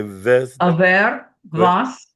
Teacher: So the V replaces the W